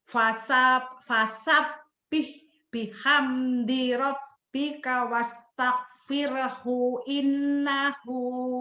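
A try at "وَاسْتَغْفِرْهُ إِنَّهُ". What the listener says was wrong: Pendek, hunya masih ketekan.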